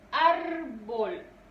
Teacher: Su sílaba tónica es ar.